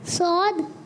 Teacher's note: اچھا سواد میں ہونٹ گول کریں گے